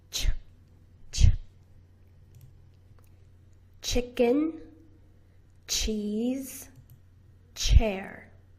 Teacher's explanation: And your voice box is turned off.